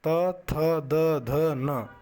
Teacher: त, थ, द, ध, न, यह दंत से बोली जाती हैं